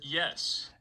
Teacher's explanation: I pop up to a high F0 peak here. Yes. And you can hear me go down to kind of a low F0 trough here.